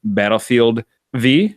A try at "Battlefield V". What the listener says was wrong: No, we've been over this. Battlefield 5. Yeah, Battlefield 5 is in the Roman numeral that looks like a V.